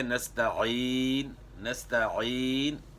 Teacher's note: عین کا مخرج گلے کے درمیان ، اور یہاں بھی یا مدہ ہے، نستعین نستعین، ایک الف